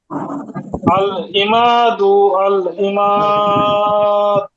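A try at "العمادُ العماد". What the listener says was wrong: দু একটু টান হয়ে গেল, টান হবে না, আবার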